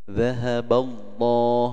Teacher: Dhahaballah, nah, ini ada lafaz Allah, sebelumnya ada fathah, disebut dengan tafkhim ya, tebal